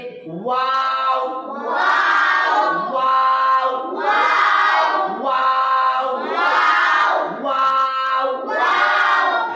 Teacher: मुंह के खाली हिस्से से निकलता और आखिर में होठ गोल होते